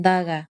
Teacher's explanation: pronounced with the tip of the tongue against the teeth